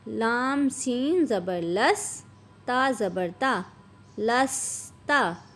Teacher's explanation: سین کو سیٹی کی آواز سے پڑھیں گے